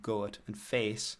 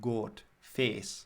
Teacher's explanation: the vowels in vowels such as goat and face, are from Jamaican patois, and so they become almost more like a monophthong. In my own slightly Geordie influenced English, it's a clear diphthong in these, so it's quite difficult to do, like goat and face, whereas in the Jamaican patois it becomes more like goat, face.